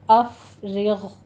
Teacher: افرغ، اف میں فا پر ہمس کریں گے، رغ، را باریک پڑھی جائے گی اور غین کو آپ نے پر کر دینا ہے